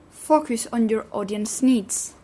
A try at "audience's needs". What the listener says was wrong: Audience's needs. everything that ends in S, extra syllable in the apostrophe S. Kiss. Kisses. Bus. Audience.